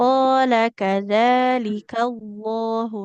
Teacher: Lam di lafaz Allahnya ya, karena didahului huruf berharokat fathah ini lebih tebal. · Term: lam jalalah